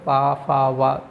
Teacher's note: ओठ के माध्यम से बोलते हैं उनको बोला जाता है ओष्ठ व्यंजन